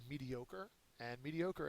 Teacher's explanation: The third syllable is accented.